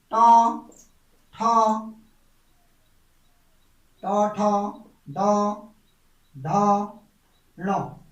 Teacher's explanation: ट वर्ग का उच्चारण बिंदु देखिए मूर्धन्य होता है। मूर्धन्य यानी कि जीभ का पीछे की ओर को पलटना, जीभ का पीछे तालु से पीछे की ओर को पलटना।